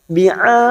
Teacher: Bi'ad, ada mat yang bertemu dengan huruf hidup dan dibaca waqaf, namanya mat arid lisikun, kita panjangkan dulu 4 harokat, lalu ujungnya kita pantulkan karena ada huruf dal yang mati di akhir kalimat dan dibaca waqaf, namanya qalqalah kubra.